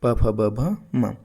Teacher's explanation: ओष्ठ से उच्चारित ध्वनियां कौन सी है? तो प वर्ग पूरा